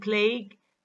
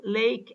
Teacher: the a vowel in the word plague is longer than the a vowel in the word lake